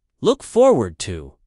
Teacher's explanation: The stress is on forward.